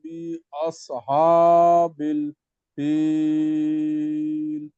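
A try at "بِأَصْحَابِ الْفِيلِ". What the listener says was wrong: বিআস এটা একটু মোটা হবে।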